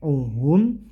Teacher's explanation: ini namanya izhar Jadi tidak boleh dibaca dengung tapi jelas ya